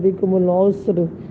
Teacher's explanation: را بھی ساکن، سین بھی ساکن اور عین ہے اس کے اوپر پیش ہے، تو اس میں بھی ہم کیا کریں گے، را کو پر پڑھیں گے